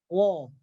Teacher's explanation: Kalau tidak ada getaran, dia dibaca wo, bukan ra.